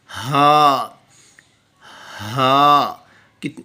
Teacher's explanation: ہا، ہا، ایک بھاری آواز کے ساتھ اس کا مخرج حمزہ کی طرح بالکل سیم۔ انر تھروٹ، تھروٹ کا جو تیسرا حصہ ہے اندرونی گلا، وہاں سے اس کا مخرج ہے، اس کی آواز پروڈیوس ہوتی ہے۔